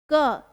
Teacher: क के बाद आपका जो आखरी में जो उच्चारण हो रहा है वो अ का हो रहा है।